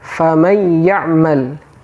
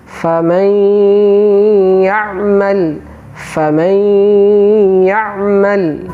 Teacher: Sebelum masuk ke huruf ya, terlebih dahulu kita tahan, kita berikan gunnah.